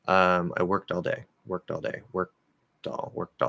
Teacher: Because we have that sort of T or D after it, you don't actually have to fully release that K.